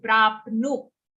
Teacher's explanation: After pra, we have half pa and then short nu.